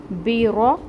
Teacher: با کے نیچے زیر ہے، سنگل حرکت، تو 1 کاؤنٹ۔ را جو ہے یہ پر پڑھا جائے گا، موٹا کریں گے اس کو کیونکہ اس کے اوپر زبر ہے